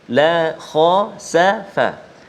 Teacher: La lembut, jangan kita terkesan dengan huruf kha. Huruf kha adalah huruf isti'la tebal. Jangan kita nak tebalkan huruf kha, lam pun ajak sekali.